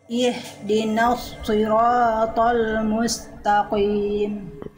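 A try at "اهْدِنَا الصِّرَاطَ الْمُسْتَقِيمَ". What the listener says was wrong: Nah, huruf qaf juga jangan qim. Huruf qaf ketika kasroh dia ketebalannya menipis. Taqim, tak juga jangan jadi tebal. Ta. Ta. Mustaqim. Jangan ta. Ta. Ta, tipis.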